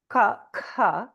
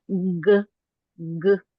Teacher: if you do a C Sound and you have your hand on your throat versus doing g g how one of them vibrates and the other one doesn't